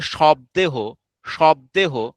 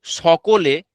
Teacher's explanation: দন্ত সটা একটু বেশি শীষ দেওয়ার মতো আওয়াজ হবে